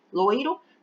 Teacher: E o I, que é essa letrinha que vem após o primeiro O, é semivogal, porque é a letrinha que a gente escuta com menos intensidade